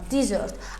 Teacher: Vurğu ikinci hecaya düşür.